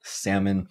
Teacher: even though we have the L in spelling we do not pronounce it when we speak this word · would be the stress syllable salmon and that would mean that even though we have an o in our writing for the second syllable it will be reduced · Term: Silent L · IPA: [sæmən]